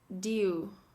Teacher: So it's not do, it's dew with a Y in it.